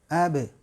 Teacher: Terdengar jelas kolkolahnya, bunyinya, vokalnya be dan mengalir